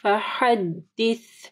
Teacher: سا جب آپ پڑھیں گے تو آپ کی زبان کی نوک اوپر کے 2 دانتوں کے پاس آئے گی